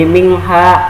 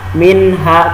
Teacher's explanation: Dia tidak dibaca dengung menjadi mingha, atau tidak dibaca dimasukkan jadi miha gitu. Tapi dia tetap dibaca jelas minha. Kenapa? Karena dia bagian dari izhar.